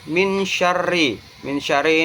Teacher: hukum bacaan Ikfa Hakiki karena ada huruf nun mati bertemu dengan huruf syin cara membacanya samar-samar